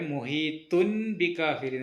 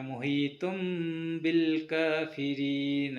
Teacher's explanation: സുക്കൂനുള്ള നൂനിന് ശേഷമോ തൻവീനു ശേഷമോ ബ എന്ന അക്ഷരം വന്നാൽ ആ നൂൻ ശബ്ദത്തെ മീം ആക്കി മാറ്റി ചെറുതായി മണിച്ച് ഉച്ചരിക്കണം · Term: ഇഖ്ലാബ്